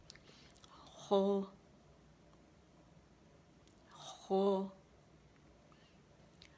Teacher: یہ موٹا ہے تو زبان کی جڑ کو اوپر لے کے جائیں گے